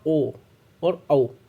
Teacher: जैसे मैंने बोला ओ और औ, तो हमारे होठों की बनावट चेंज हो रही है और गले से आ रहा है वर्ड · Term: कंठोष्ठ